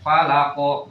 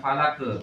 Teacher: Falaqo, bukan falake. Kalau falake jatuhnya tipis.